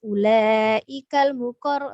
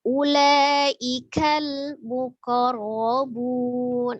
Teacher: Ujung lidahnya agak menekan di langit-langit, ditahan ya supaya dia tidak dipantul.